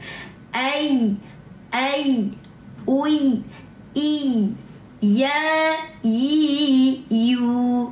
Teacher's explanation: Kena rasa tengah lidah, bukan hujung lidah.